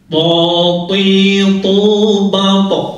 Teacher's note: ujung lidah bertemu dengan gigi seri yang dalam yang atas. Kemudian membunyikannya dengan tabkhim, dengan tebal. Po itu mau harokatnya fathah, kasroh atau dhammah atau mati, dia tetap tebal.